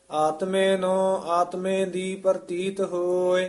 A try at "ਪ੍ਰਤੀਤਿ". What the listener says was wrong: ਪ੍ਰਤੀਤ ਰਾਰਾ ਨਹੀਂ, ਹੇਠਾਂ ਰਾਰਾ ਹੈ, ਪ੍ਰਤੀਤ ਪ੍ਰ ਉਚਾਰਨ ਕਰਨਾ ਹੈ।